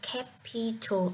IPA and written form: ˈkæpɪtl (Capital)